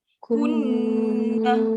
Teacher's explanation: Dia punya dengung tu mesti 2 akad.